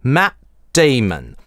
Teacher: Та же исторния /t/ в английском не озвончается регрессивно, справа налево. В английском перед стопом /t/ становиться гортанной смычкой.